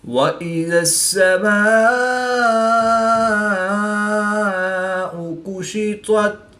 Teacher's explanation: الف مدہ کے بعد حمزہ اسی کلمے میں ہے، تو یہاں پر مد متصل ہوگی، 3 سے 5 الف تک کھینچ کر پڑھیں گے۔